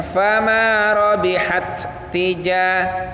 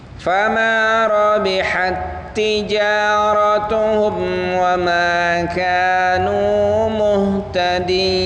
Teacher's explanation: Ya, perhatikan di sana ada tak mati bertemu dengan tak. Nah, di sana hamasnya tidak boleh terlihat. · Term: Idgham mithlain